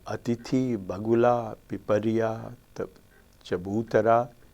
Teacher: The stress is always on the antepenultimate syllable. That is the 3rd from the right.